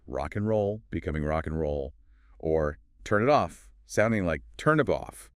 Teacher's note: The final consonant of one word links directly onto the initial vowel of the next.